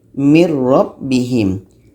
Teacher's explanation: contoh yang kedua daripada Nun Nun masuk ke roh Miro mirrobbihim Nun hilang masuk ke roh mirrobbihim dan kita sebenarnya sudah terbantu dengan ada shoot dah ini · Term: idgham